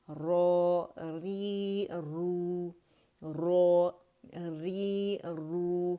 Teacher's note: اور کسرہ کے ساتھ یہ باریک پڑھا جائے گا، اور ضمہ اور فتح کے ساتھ یہ موٹا ہی پڑھا جائے گا